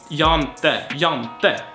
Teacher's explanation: Jag inte becomes jag inte, and inte turns often into ente, and since there is a vowel before this, it kinda gets lost. So we have jante.